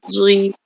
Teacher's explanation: za tebal, keluar lidah. Tebal.